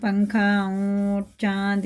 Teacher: حرف اخفا 15 ہوتے ہیں، تنوین نون ساکن کے بعد ان میں سے کوئی حرف آ جائے تو غنہ اور اخفا کر کے پڑھیں گے، یعنی اس کو نون کو سائلنٹ کر کے پڑھیں گے ناک میں